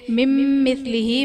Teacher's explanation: مم مثلہ میں نون ساکن کے بعد ادغام، نون ساکن کے بعد حروف یرملون میں سے میم ہے، یہاں بھی ادغام مع الغنہ کا قاعدہ ہوگا، یعنی نون ساکن میں ہم غنہ کر کے پڑھیں گے